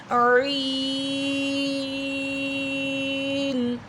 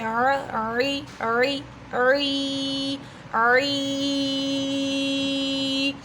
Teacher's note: عین کا مخرج جو ہے وہ وسطی حلق ہے، یعنی حلق کا درمیان والا حصہ